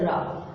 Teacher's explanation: र का जब हम उच्चारण करते हैं तो ऐसा लगता है जैसे जिह्वा लुढ़क रही है। आप एक बार करके देखिए, जैसे रा, तो झटके से लुढ़कती हुई आगे निकलती है, इसलिए इसे कहते हैं लुढ़कित। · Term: लुंठित